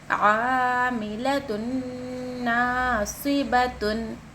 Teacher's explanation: تنوین کے بعد نون ساکن کے بعد نون اگر آئے تو غنہ کرنا لازمی ہے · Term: ادغام یرملون